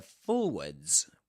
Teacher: forwards with the Z at the end. That's in British English. In American English, forward.